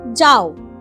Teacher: যাওয়ের মধ্যে আ আর ও মিশে আছে। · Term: যৌগিক স্বর